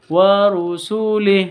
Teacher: Awalnya wa rusulihi panjang karena berhenti maka haknya menjadi sukun atau menjadi mati.